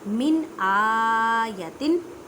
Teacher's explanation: इजहार का मतलब होता है ज़ाहिर करना। नून साकिन या तनवीन की आवाज़ को ज़ाहिर करें